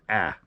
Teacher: slightly alter the alpha so it's pronounced a little bit more nasal